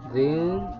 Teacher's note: ikhfa karena ada tanwin menghadapi huruf ta. Membacanya harus disamarkan.